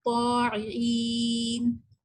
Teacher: طا جب ہم کہتے ہیں تو ہمارا طا ادا کرنے سے زبان کی جو بیک ہے وہ اوپر کے تالو کو جا کے ٹچ ہوتی ہے, اس کو استعلاء کہتے ہیں, ٹھیک ہے.